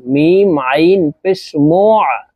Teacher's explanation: হলকের মধ্যখান থেকে চাপ দিয়ে উচ্চারণ করবা এই আইনের উচ্চারণ